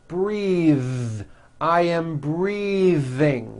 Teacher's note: I am breathing with a voiced th